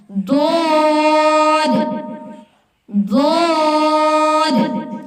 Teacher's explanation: زبان کا ہافہ یا کروٹ جب اوپر کی 5 داروں سے لگے تو یہ حروف ادا ہوتا ہے۔